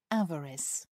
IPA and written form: ˈævərɪs (avarice)